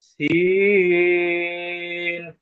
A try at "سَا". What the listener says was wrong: সিন নয় সি খাড়া জবর সা